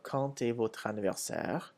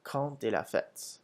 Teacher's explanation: When quand comes before a vowel, such as in quand, the D changes to a T sound.